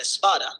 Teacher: prothesis is the addition of a sound at the beginning of a word such as the initial e in the Spanish word Espada